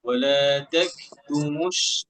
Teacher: কাফে হামস হবে। বাতাস বাতাস দিয়ে হবে।